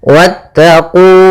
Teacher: mad thabi'i yaitu ditandai dengan dommah bertemu wau panjangnya adalah dua harakat · wnya langsung ke huruf ta dan wnya tidak dipanjangkan. Meskipun kita mendapati bahwasanya kalau ada huruf alif setelahnya maka dia panjang.